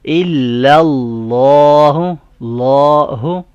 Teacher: اللہ کے جو نام میں یہ لام ہے اس سے پہلے زبر فتحہ سائن ہے، اس لیے اس کو ہم بولڈ پڑھ رہے ہیں، اس کو ہم موٹا پڑھیں گے، الا اللہ نہیں پڑھیں گے، الا اللہ۔